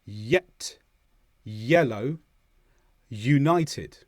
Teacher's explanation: It's almost a vowel sound. There's very little restriction of air, but the tongue moves up at the back just to restrict the flow a little bit. And as you release the tongue down, it makes that y-y. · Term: Y sound, y sound